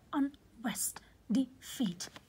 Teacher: the focus or the stress is on the second syllable but not the first syllable